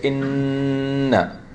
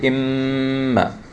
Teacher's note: when we talk about the noon and the mim, the air is coming out of the nose. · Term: ghunna